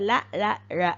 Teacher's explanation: வந்து பிரிவலி ஒளிகள் அப்படின்னு சொல்லி சொல்லலாம் காற்று இரண்டு நாக்கோட இரண்டு பகுதியிலயும் வாயறையில் இருந்து வெளிவரக்கூடிய காற்று நாக்கின் இரண்டு பக்கங்களையும் பிரிந்து வெளியே போறது மருங்கொழி